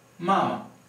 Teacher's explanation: the neutral tone is not stressed, meaning that it's rather short, and it kind of blends into the syllable that preceded it. For example, if you want to pronounce those 2 characters one after the other, it will sound something like mama.